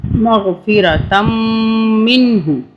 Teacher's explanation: میم پہ ہم غنہ کریں گے تشدید کی وجہ سے